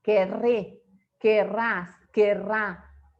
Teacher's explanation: Fíjense que aquí quedan dos R's, o sea, el dígrafo R, que tiene ese sonido que vibra, un sonido que vibra